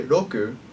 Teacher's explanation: in Japanese you don't usually move your lips or your teeth your tongue touches the top of the roof of your mouth rather than your teeth · notice that when I say Roku it's neither an r or an L when you say R sounds in Japanese you don't usually move